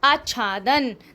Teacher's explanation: स्व जमा छंद, स्वच्छंद, च का ध्वनि सुनाई दे रही है ना